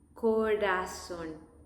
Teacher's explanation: There is no double R in this case, in this exception, just one R, and it's soft.